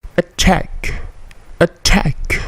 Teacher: T-nya attack, plosif, kemudian K-nya berbunyi memantul.